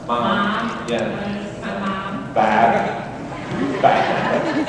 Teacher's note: In the Midwest, they nasalize all their vowels.